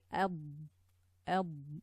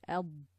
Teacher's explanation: When you say Ab, there's a quality of Dad that the letter, the air sort of compresses in this space here, and it's very specific to the letter Dad. So Ab, when we say Ab, you can hear like a compression of air inside on top of the tongue, between the tongue, the top of the tongue, and the roof of the mouth